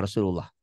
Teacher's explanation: dibaca tafkhim, tebal, berbunyi Allah seperti bunyi O